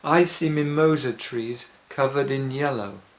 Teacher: then I would give the stress to the word yellow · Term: sentence stress